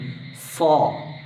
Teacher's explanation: ഈ സ്വാ എന്ന അക്ഷരം പറയുമ്പോൾ നാവിൻറെ മധ്യഭാഗം പൊങ്ങിയിട്ടായിരിക്കും ഉണ്ടാവുക അതുകൊണ്ടാണ് ഇസ്തിലാന്റെ അക്ഷരം എന്ന് പറയുക അതായത് ഉയരും നാവ് മേലേക്ക് ഉയരുന്ന അക്ഷരങ്ങളിൽ